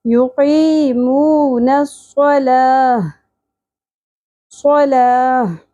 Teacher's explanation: یہ گول تا ہاں میں بدل جائے گی اور ساکن ہو جائے گی